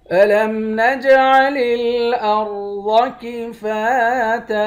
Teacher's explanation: جیم پر قلقلہ کریں گے ، را اور ضاد ان دونوں حرف کو موٹا پڑھیں گے،